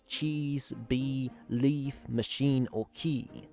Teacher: It's the front high unrounded vowel, which exists in English in both its short and long form. Long E is more common, for example in words such as cheese, bee, leaf, machine or key.